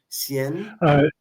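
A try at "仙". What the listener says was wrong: Xian. In the pinyin, it's Xian. Xian.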